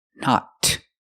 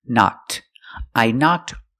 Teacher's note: we hear the ed sound knocked making the T sound